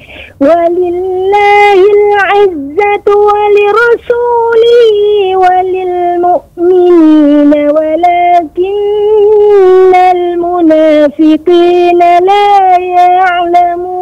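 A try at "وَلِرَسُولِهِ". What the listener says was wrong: Kemudian pada kata walira, ini memang kita harus lebih fokus. Li kasrah, ra-nya fathah, maka ra tetap tebal. Walirasu, ra-nya tebal.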